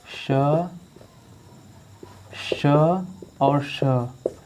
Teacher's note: यह हो गया अघोष, क्योंकि इनका उच्चारण करने पर हमारे स्वर तंत्र में कंपन नहीं हो रहा है। · आप श को बोलेंगे तो आपके स्वर तंत्र में कंपन नहीं होगा।